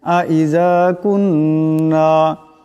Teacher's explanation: ইজা কাফ নুন পেশ কুন নুন আলিফ জবর না কুন্না এখানে এক আলিফ পরিমাণ নুন মুশাদ্দাদের গুন্না হবে